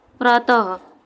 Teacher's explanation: जब हम विसर्ग का उच्चारण करते हैं तो उसमें ह की साउंड आती है